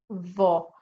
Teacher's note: you are taking the tip of the tongue and you are touching the top two incisors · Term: letter Dha